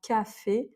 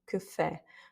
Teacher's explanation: Par exemple, que fait, ici, l'accent tonique étant sur le E parce qu'il y a un accent, du coup le A ne se prononce pas de manière très ouverte, très importante, c'est pas café, c'est que fait. Il n'y a pas d'importance mise sur le A, il est assez fermé, assez court.